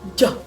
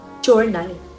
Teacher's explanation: Sumunod ay j halimbawa journal katulad ng sh ngunit ang vocal chords ay nagv-vibrate.